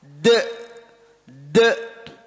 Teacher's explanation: Jadi qalqalah itu pelafatannya seperti ada hamzah setelahnya. De. Bisa kalau kita tulis Latin D E koma di atas.